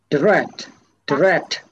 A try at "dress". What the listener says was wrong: Không Dread. Âm T at the end sau là sai rồi. Sao nó phải là dress.